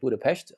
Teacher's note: the single S in Hungarian is like a sh sound in English